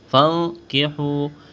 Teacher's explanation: نون ساکن کے بعد کاف ہے، یہاں پر اخفا کریں گے، آواز ناک میں چھپائیں گے، کاف کو باریک کرنا ہے.